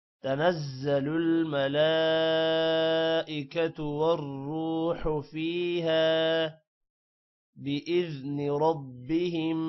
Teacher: ملا لام پر کھڑی زبر بھی ہے اور مد بھی ہے، اس لیے لام لمبا ہوگا · اور والروح را موٹا ہوگا۔ تنزل الملائکۃ والروح فیہا بإذن ربہم، ربہم را موٹا ہوگا اور میم پر غنہ ہے۔